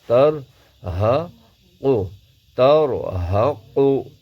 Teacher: قاف کو پر آواز میں موٹی آواز کے ساتھ پڑھیں گے